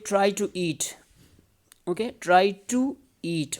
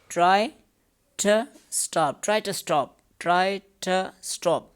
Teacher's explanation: So two is used before vowels, strong form, and ta is used before consonant.